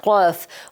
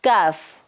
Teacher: क़ाफ़ जो 2 डॉट्स वाला हर्फ है उसकी आवाज़ मोटी होगी, भारी होगी।